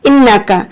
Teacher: اب انکا پتلا پڑھنا ہے کاف، لیکن قاف پڑھ جاتے ہیں